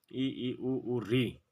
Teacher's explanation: उच्च स्वर संवृते का शाब्दिक अर्थ है बहुत कम खुला हुआ वे स्वर वर्ण जिनके उच्चारण मुख बिल्कुल कम खुले उन्हें संवृत स्वर कहते हैं